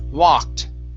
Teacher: instead of walked with an O sound, it's an ah